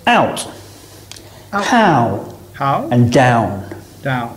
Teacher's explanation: This is a combination of a and u or oo. Now our mouth is closing and the shape of the lips is changing at the same time, rounding a little as we say the sound. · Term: diphthong sounds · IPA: aʊ